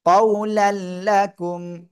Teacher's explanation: কফ অ জবর কউ, লাম, লাম দুই জবর লাল। তানবিনের পরে ঈদগামে বেলা গুন্নার অক্ষর লাম আসছে, গুন্না ছাড়া মিলিয়ে পড়তে হবে। কউলাল, লাম জবর লা, কাপমি পেশকুম, কউলাল্লাকুম।